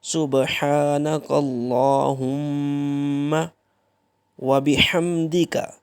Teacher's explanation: یہ جو ہا ہے یہ حلق کے اوپر والے حصے سے ادا ہوتی ہے